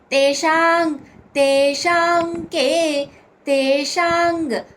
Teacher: అక్కడ అంగ్ అనుస్వరోచ్చారణ అంగ్ కింద క క గ గ అంగ్ అని పలుకుతాం